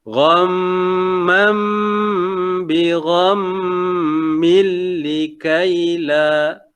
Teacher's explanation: Yang pertama ghamma, gham tu satu dengung. Gham itu kena 2 harakat sebab atas mim ada syiddah. Wajibul gunnah 1.